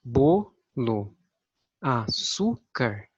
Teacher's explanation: As palavras paroxítonas são aquelas que apresentam a sílaba tônica com maior intensidade sonora na penúltima sílaba, ou seja, a penúltima sílaba da palavra é a mais forte quando nós vamos pronunciar.